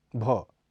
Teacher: इसका के उच्चारण में स्फोट भी कुछ कम होता है भ यह महाप्राण घोष ध्वनि है इसका उच्चारण स्थल होठ है